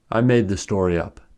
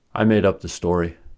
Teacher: in the first sentence the verb is more stressed than the adverb, but in the second sentence the adverb is more stressed than the verb.